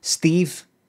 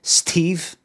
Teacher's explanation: Have you ever noticed that Steve, you say it like with a D sound and not a T sound?